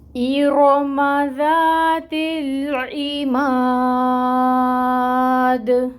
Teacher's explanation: تجوید rules دیکھیے گا، حمزہ ہے اور حمزہ کے نیچے کسرہ کی حرکت ہے، اس کو 1 کاؤنٹ ادا کریں گے حرکت کو، اور حمزہ کو محقق ادا کریں گے، قطع کر کے پڑھیں گے · رو پر پڑھیں گے کیونکہ رو کے اوپر فتحہ کی حرکت ہے، حرکت کی مقدار ہوگی 1 کاؤنٹ اور یہ پر پڑھا جائے گا۔